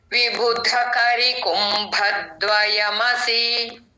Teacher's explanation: విబుధ కి మహాప్రాణం రావాలి